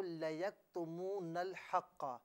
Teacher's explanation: لَيَكْتُمُونَ میں جو کاف ہے نا یہاں پر جنبش بالکل نہ دیجئے